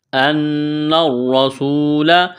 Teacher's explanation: نون مشدد ہے غنہ کریں گے، آواز ناک میں چھپائیں گے · حمزہ کو نون کے ساتھ پلس کرنا ہے، نون کو آگے را کے ساتھ پلس کریں گے